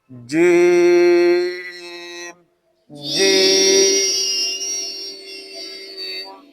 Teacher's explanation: जीम जुबान के दरमियान और ऊपर के तालु के दरमियान से निकलता है